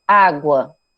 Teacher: Você quase não pronuncia o U, você vai pronunciar mais a vogal. Então, ela fica como se fosse o A, um som só.